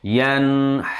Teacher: Nun sukun bertemu ha. Maka membacanya harus Jelas. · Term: Izhar halqi